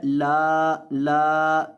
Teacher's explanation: اس کے بعد الف ہے، لا، لا تھوڑا سا 1 سیکنڈ کے برابر لمبا کریں گے